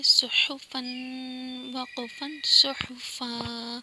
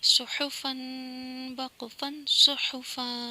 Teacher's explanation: दो ज़बर वक़्फ़ की सूरत में खींचे जाते हैं